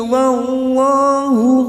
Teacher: lam jalalah yang sebelumnya fathah kita baca tafkim atau tebal